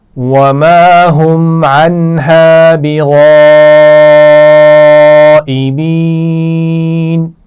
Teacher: میم ساکن کے بعد میم بھی نہیں ہے اور با بھی نہیں ہے اس لیے یہاں پر غنہ نہیں کیا جائے گا